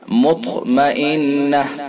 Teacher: طا کے اندر قلقلہ بھی ہوگا اور طا کو پر کر کے بھی پڑھیں گے۔ قلقلہ اس لیے ہوگا کہ طا حروف قلقلہ میں سے ہے اور پر اس لیے ہوگا کہ طا حروف مستعلیہ میں سے ہے۔